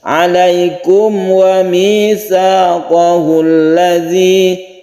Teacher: Mem bertemu dengan waw ini tidak panjang, tidak berdengung, karena izhar itu jelas dan terang, jelas suara memnya jelas. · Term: izhar syafawi